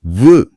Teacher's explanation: இது மேல்வாய் பல்ல கீழ் உதடு பொருந்துவதால பிறக்குது. கீழ் உதட்டை லேசா உள்ள எழுத்து மேல் பற்கள் உரசினா வ பிறக்கும்.